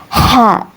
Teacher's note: Huruf ha ini keluar dari tengah tenggorokan